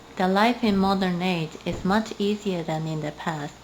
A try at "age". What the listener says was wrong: So you might say the life in the modern age. Age. So you didn't quite pronounce that j at the very end of that word. So your intelligibility was a little bit affected.